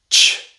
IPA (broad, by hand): tʃ